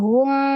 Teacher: kalau mimnya kan kembali ke makhraj dengan merapatkan kedua bibirnya gitu. Jadi jangan pada saat mim sukun itu dibaca pada saat bibirnya masih maju gitu.